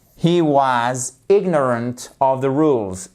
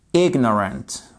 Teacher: avec une accentuation sur le IG ignorant